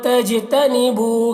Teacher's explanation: تج جیم میں قلقلہ ہوگا. بو یہاں پر واو مدہ ہے.